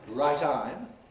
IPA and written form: ˈraɪˈtaɪm (right time)